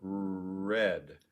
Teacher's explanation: of a simultaneous action which is what americans tend to do we tend to round our r's a little bit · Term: additional lip rounding